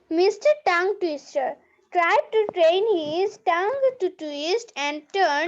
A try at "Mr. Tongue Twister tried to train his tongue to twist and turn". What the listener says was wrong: আরো ফাস্ট আস্তে বললে হবে না, জোরে যাও। আরেকবার, অনেক তাড়াতাড়ি বলতে হবে।